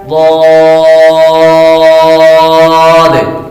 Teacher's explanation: زبان کی کڑوٹ اور اوپر کے داڑوں کی جڑ سے ادا ہوتا ہے